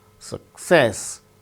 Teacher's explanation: Success, with stress on second syllable